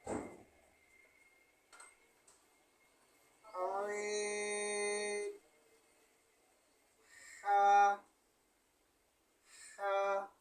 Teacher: 2 নম্বর মাখরাজ হলকের মধ্যখান হইতে উচ্চারিত হয়।